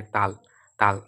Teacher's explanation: জিহ্বার যে অগ্রভাগ, সামনের ভাগ, সেটা কি দাঁতের উপরের পাটির দাঁতের সাথে লেগে যায় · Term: দন্ত ব্যঞ্জনধ্বনি